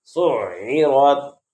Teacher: عین حلق سے ادا ہوتا ہے، اس لیے عین کو حلق سے ادا کریں گے